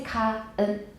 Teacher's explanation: 我们不要舌后音，我们要舌尖音